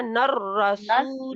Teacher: रा को लंबा नहीं खींचना, नर नर रसूल।